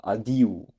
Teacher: l'accent tonique est sur le i